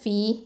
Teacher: ஃப கெஸ்ரா யா மத்து ஃபி. இது யாவுல் மத்து 2 ஹரக்கத்தை நீட்டணும்